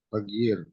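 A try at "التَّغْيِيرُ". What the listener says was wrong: At-taghyiru. Coba Pak, at-taghyiru. Atau at-taghyir boleh. At-taghyir pakai an-nya Pak. At-taghyir.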